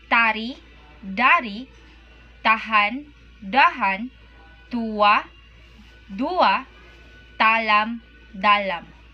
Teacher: the T in Malay is not aspirated when it occurs the syllable initial position, no puff of air, as in the English word time.